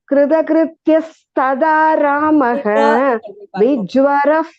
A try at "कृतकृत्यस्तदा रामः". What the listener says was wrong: कृत you are saying krida Can you repeat after me? Can you repeat after me? Kritakrityas. Tada Ramaha. Kritakrityas tada Ramaha.